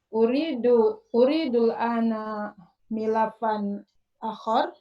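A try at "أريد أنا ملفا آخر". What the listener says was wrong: Salah, bukan intonasi pertanyaan ini. Uridul ana milafan akhar.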